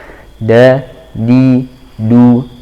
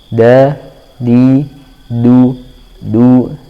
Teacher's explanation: Ujung lidah saja yang terkena. Da, di, du dengan gusi gigi seri atas ya, bagian sini gusi gigi seri atas. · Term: dal